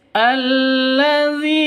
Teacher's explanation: alladzi dzi panjang dua ketukan karena ada ya mati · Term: mad asli